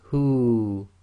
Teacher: the waw goes sakin and effectively this turns into the long vowel dhamma waw. So it would be read as hu, too long.